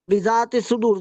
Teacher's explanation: زال زبر الف زا، یہ الف مدہ ہے، یہاں پہ مد اصلی ہو جائے گا، یہاں پہ دو حرکت کریں گے